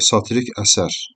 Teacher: vurğu düşəcək sonuncu hecaya. Amma satirik desəm vurğu inin üzərində olacaq. · satirik əsər, vurğu düşəcək sonuncu hecaya